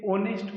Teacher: ये एच से स्टार्ट है लेकिन हम इसे ओनेस्ट पढ़ते हैं, ओ, जो कि एक वोवेल की तरह साउंड करता है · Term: एच साइलेंट